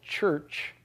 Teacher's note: it completely stops the flow of air and then it gradually peels back and allows the air to flow out